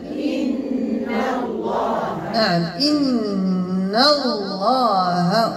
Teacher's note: تجاورت النون مرققة مع اللام مفخمة لإسم الجلال، لأن اللام مسبوقة بالفتح، فأقول إن الله ولا أقول إن الله جماعة.